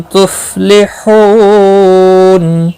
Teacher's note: لَعَلَّكُمْ میم ساکن کے بعد تا آیا ہے، اظہار شفوی ہوگا، غنہ نہیں کریں گے، فا ساکن کو ہلانا نہیں، حو واو مدہ ہے، ایک الف کے برابر کھینچ کر پڑھیں گے، اور وقف کی صورت میں نون ساکن پڑھا جائے گا، وقف بالاسکان ہوگا، مد العارض وقفی ہوگا، 3 سے 5 الف کے برابر کھینچ کر وقف کریں گے۔